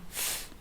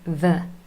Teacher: the only difference here really is that f is unvoiced, no vibration from your vocal cords, and v is voiced